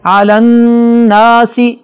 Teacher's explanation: نون پر شد ہے، لہذا غنہ ہوگا